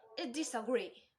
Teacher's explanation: If we notice, the first syllable gets the secondary stress and the last one gets the primary stress